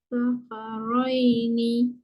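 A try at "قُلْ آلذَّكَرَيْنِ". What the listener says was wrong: Huruf zal lidah keluar. Dia macam ni. Kul slow kita nak pakai lidah keluar. Kul zakaraini. Okey, slow-slow. Kat hujung tu baru masuk huruf zal. Tu panjang dulu.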